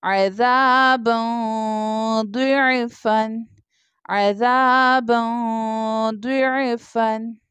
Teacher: अब यहाँ पर बा के ऊपर फतहतैन यानी डबल ज़बर की तनवीन है। तनवीन के बाद दौद लेटर है जो कि इख्फा लेटर है, इसलिए हम यहाँ पर इख्फा यानी गुन्ना करके पढ़ेंगे